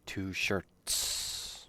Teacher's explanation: dress shirt but fukusu there is an s two shirts and you can make that s longer so people can clearly hear you are saying the plural